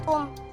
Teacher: Yang pertama, hukumnya ikhfa hakiki pada kata kuntum. Karena nun sukun bertemu dengan huruf kaf, maka dibaca samar dan mendengung.